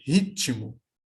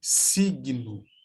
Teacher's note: porque há um acréscimo de um i nesse T, que aparece na escrita como mudo. Então, ficaria ritmo na minha fala.